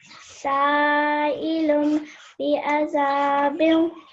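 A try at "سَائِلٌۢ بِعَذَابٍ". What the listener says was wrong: Pause a little bit more on the lum, a little bit, because we're joining it with the ba.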